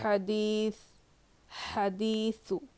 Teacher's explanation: دانت جو ہوتے ہیں نا ثنایا علیا، اس کے کناروں پر، یعنی فرنٹ ٹیتھ کے اوپر والے جو دانت رہتے ہیں اس کے کنارے، اس کے ایڈجز پہ لگانے سے سا ادا ہوتا ہے، بالکل ہلکا پڑھیں گے